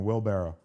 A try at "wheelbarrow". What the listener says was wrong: Well, I think you're saying wool instead of wheel. Wheelbarrow.